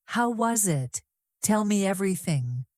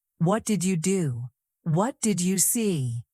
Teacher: Notice the rising tone in every question.